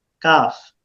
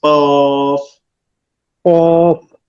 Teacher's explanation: কাফ পাতলা আওয়াজ, আর কফ এই যে এটা মোটা আওয়াজ